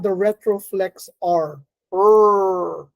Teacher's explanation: It's retroflex because the tongue is bent backwards. So this is the voiced unaspirated alveolar retroflex.